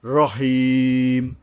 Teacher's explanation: এটা হলো লম্বা হাটা, একটু টেনে পড়তে হবে এবং গলায় কিছুটা শোষ শব্দ হবে।